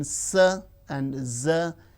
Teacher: alveolar, the teeth ridge and the blade of the tongue